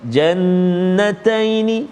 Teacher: Baik, yang pertama sekali kalimah jannataini, ada wajib al-ghunnah, dengung dua harakat